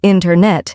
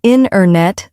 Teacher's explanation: is internet we don't usually say internet instead we say inet the t- sound gets softer or disappears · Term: dropped sounds